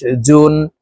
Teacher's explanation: জিম হরফের উচ্চারণ জিহ্বার মধ্যখান থেকে পড়তে হবে কারণ জিমের মাখরাজ জিহ্বার মধ্যখান থেকে হবে